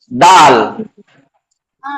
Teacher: दाल जुबान की नोक के जरिए से इसका जो मखज है दाल वो ता का है।